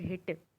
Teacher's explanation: this is a sound made in the throat between the vocal cords